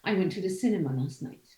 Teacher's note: So what you would like to to emphasize, or at least what you would like to make important, is the fact that you went to the cinema. So your sentence stresses would be went and cinema. Okay, not last or night, because already known.